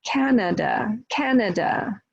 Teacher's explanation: Canada is 3 syllables, right? First syllable stressed